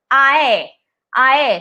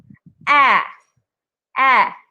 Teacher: this AE sound is not two separate vowel sounds, meaning you can't say it as ae.